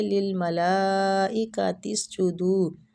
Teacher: ملائی لام پہ جو مد ہو رہی ہے اس مد کو کہتے ہیں مد واجب متصل، مطلب جڑی ہوئی مد۔ تو اس کو 4 سے 5 الف کھینچیں گے